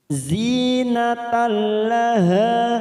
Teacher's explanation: Zinatal, natal ada fathah tanwin pada huruf ta marbutoh bertemu dengan huruf lam, namanya idgham bila gunnah. Natal hanya masuk tanpa mendengung.